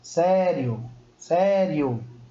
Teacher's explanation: quem é a vogal e quem é semivogal e neste caso começando com a semivogal e depois de uma vogal eu tô começando de uma coisa mais fraca e tô indo para uma coisa mais forte então tô fazendo um percurso crescente ó eu vou do pequeno